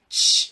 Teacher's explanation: chair 할 때 치 사운드 발음 해보시면 치 하면 입이 상당히 앞으로 많이 나오고 입이 많이 나오고 그 혀가 입천장에 살짝 닿아요. 치 해보시면 그 입모양을 그대로 그 혀의 위치를 그대로 하고 소리를 넣으면 소리예요.